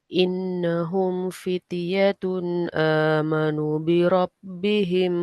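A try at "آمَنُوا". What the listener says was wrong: Amanu panjang. Amanu panjang.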